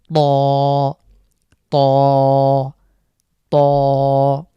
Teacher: একটু মোটা করে ত আমরা মুখের মধ্যেই ভরাট করে উচ্চারণের চেষ্টা করব